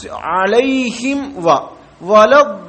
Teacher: ആയി പോകരുത് അപ്പൊ അലൈഹിം അലൈഹിം ഇവിടെ സുക്കൂനുള്ള മീമിന് ശേഷം വാവ് വന്നു സുക്കൂനുള്ള മീമിന് ശേഷം വാവും ഫാവും വന്നാൽ നല്ലോണം ഇഹാർ ചെയ്യണം